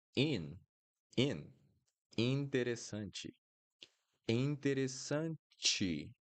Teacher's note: And the last one, in. We have the N here, so it becomes nasal.